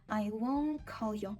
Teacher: так часто роблять носії вони не вимовляють останню букву T